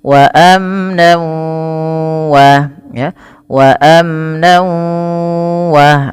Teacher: Kalau gunnah bi gunnah harus disertai dengan penahanan pada lafal yang dimasukkan. Ketika tanwinnya masuk ke waw, maka bunyi wawnya ditahan. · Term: idgham bi gunnah